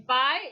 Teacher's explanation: position okay and during the articulation of this this tongue i the glide begins near the front open unrounded position and moves in the direction of the rpi that is a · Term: diphthong eye